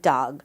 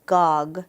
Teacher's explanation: A lot of kids, instead of using the D in the front of dog, they might say gog, because it's easier to just say the G sound in both places, in the front and in the back, than to actually make a new sound such as dog.